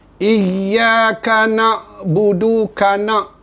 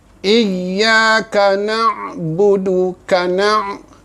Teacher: ambil makhraj ain di pertengahan halkum